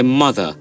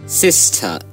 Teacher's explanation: তাহলে রা উচ্চারণ হচ্ছে না ব্রিটিশ ইংলিশে